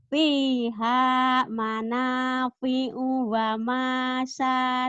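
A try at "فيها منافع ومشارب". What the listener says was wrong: Pendek. Fiha manafi'u wa masyaribu. O-nya pendek. Manafi'u wa masyaribu. O-nya pendek ya.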